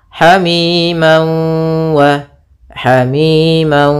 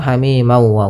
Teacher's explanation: ini namanya idgham bighhunah atau idgham maal ghunah cara membacanya yaitu masukkan tanwinnya ke wau sambil ditahan gunahnya dua harakat Hamim wa Hamim tidak langsung Hamim ma wa gasq tapi tahan